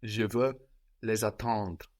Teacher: So again, now we have LES for them, pronounced le, but the S is popping up again, activated by the vowel of attendre, and that S between vowels sounds like a Z